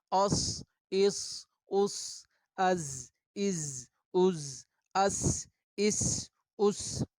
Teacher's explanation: تینوں میں ایک سیٹی کی آواز پائی جاتی ہے، اسی وجہ سے ان کو حروف صفیریہ کہا جاتا ہے. صفیر کہتے ہیں صاد کے ساتھ جب صفیر ہو تو چڑیا کی آواز کو کہا جاتا ہے.